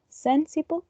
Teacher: It has 3 syllables, and the most prominent syllable is the first one